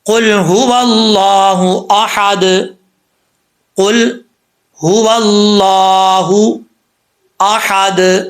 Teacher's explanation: حمزہ کے بعد جو ہا ہے یہ ہا باریک ہے، اس کو پر نہیں پڑھنا، یعنی موٹا نہیں پڑھنا، احد نہیں پڑھنا۔